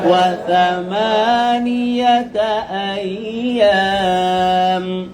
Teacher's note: সা জিবা বের করা না, মানে জিবার আগা দাঁতের আগা।